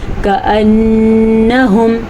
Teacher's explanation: نون کا غنہ ادا کرنا ہے